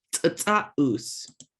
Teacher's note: Make sure you're making that hard puffing of air.